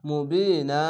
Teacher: এক আলিফ টেনে থেমে যাবেন একটি জবার বাদ দিবেন আলিফের সঙ্গে মিলিয়ে এক আলিফ টেনে থেমে